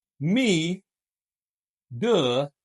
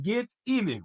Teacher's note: t is in between two vowel sounds and it gives us the flip sound